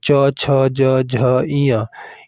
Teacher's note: ये सभी जो वर्ण है किससे उच्चारित होते हैं, तालु से उच्चारित होते हैं